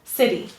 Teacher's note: sit is said clearly and it is said the loudest so sit is stressed